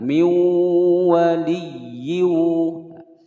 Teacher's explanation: kasrotain bertemu dengan huruf wawu dimasukkan dan didengungkan selama dua ketukan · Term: Idgham billaghunnah